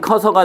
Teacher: 크어서는 커서가 되니까 으 탈락, 쓰어서는 써서가 되니까 으 탈락이죠